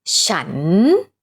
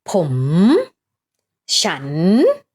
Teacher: Go down first and then go up. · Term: rising tone